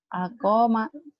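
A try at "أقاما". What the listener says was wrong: Koknya panjang.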